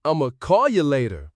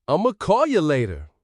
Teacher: Ya instead of you. That's reduction again.